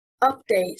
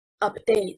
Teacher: Update, stressing on the first syllable, means an updated version, and it is a noun. Update, stressing on the second syllable, means to modernize and is a verb.